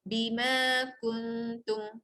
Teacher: Bima kuntum. Jadi ma tu panjangnya 2, kung juga dengung 2.